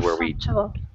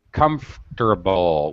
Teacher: We don't actually pronounce the O